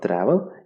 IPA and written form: ˈtrævl (travel)